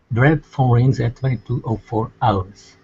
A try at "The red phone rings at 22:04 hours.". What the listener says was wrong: Good.